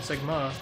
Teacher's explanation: Emphasis on the second syllable.